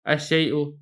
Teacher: شیء سے الشیء، یہ شین بھی حروف شمسیہ میں سے ہے، تو یہاں پر بھی اسی طرح شین کے اوپر تشدید پڑھ کر حمزہ کو براہ راست آپ شین سے ملا دیں گے